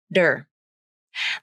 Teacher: comfortable with that combination then the middle syllable is tur but in fast speech the t turns into the flap